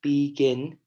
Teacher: You hear that gin sound, which means it's stressed a little bit more.